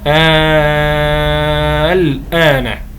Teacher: حرف المد الالف وبعده لام ساكنه وهذه اللام الساكنه غير مشدده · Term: مخفف